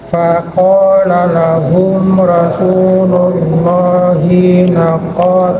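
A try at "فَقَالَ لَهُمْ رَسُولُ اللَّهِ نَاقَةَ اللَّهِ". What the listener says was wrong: Ini pendek, Pak. Ulang. Rasulullahi Hinya pendek. La ba'sa, hinya pendek ya.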